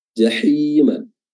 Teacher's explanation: Huruf ha yang ada jahim itu makhrajnya adalah wasatul halq yang keluar dari tengah tenggorokan